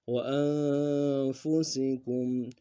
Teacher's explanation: انفس میں نون ساکن میں غنہ کریں گے، فا اور سین دونوں کو باریک کریں گے، کاف کو میم ساکن کے ساتھ ملانا ہے، یہاں پہ غنہ کریں گے۔